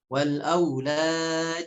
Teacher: Berikutnya adalah pada kata wa takatsurun fil amwali wal aulad, ya. Aulad, dalnya di sana dipantulkan dan pantulannya tidak terlalu tebal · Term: qalqalah